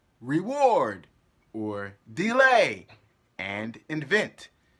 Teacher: it is an unstressed syllable followed by a stressed syllable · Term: I am B